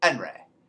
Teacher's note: we leave off the h in the beginning of words